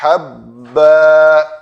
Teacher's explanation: میم فَأَنبَتْنَا فِيهَا حَبًّا، دو زبر والی تنوین ہے، الف مدہ بنا کر رکیں گے